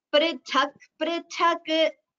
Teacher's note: it is better if you chant it as pr, not pra, this particular letter.